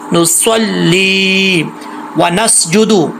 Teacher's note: سین میں سیٹی ہے